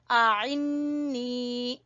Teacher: नून मुशद्दद का गुन्ना करते हुए नून को खींचेंगे।